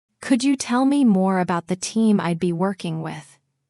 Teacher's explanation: Your voice rises slightly on the word with. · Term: friendly rising tone